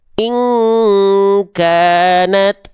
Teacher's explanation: Tuh, ini ada ikhfa juga. Tapi nun sukun berjumpa dengan kaf, baru dia dengungannya itu condong pada ang, kuat.